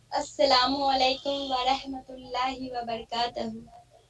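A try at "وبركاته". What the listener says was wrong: تہو نہیں توہو ہے. تاپش تو ہے.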